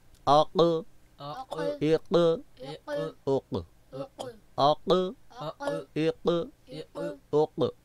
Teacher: زبان کی جڑ اور اس کے مقابلے میں جو لٹکتا ہوا تالو، تالو بھی کہہ سکتے ہیں، کوا بھی کہہ سکتے ہیں، لحات بھی کہہ سکتے ہیں، ٹھیک ہے۔ وہ تالو آپ کی زبان کی جڑ سے ٹچ ہوتا ہے، ملتا ہے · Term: بڑا قاف